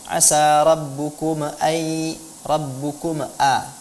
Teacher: ibu belum dengan sempurna mengucapkan huruf mim, kemudian bibirnya sudah dilepaskan sehingga dia membentuk sedikit qalqalah